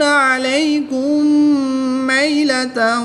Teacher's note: میم ساکن کے بعد دوسری میم ہے تو یہاں پر ادغام شفوی ہوگا، یہاں پر غنہ کر کے پڑھیں گے